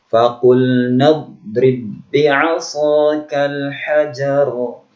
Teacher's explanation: Masukkan ba yang pertama ke yang kedua, seolah ba ini tidak dibaca